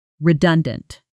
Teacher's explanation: at natural speed with the stress landing hard in the middle